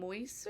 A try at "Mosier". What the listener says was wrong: Mosier. know it's tough because the I comes before the S.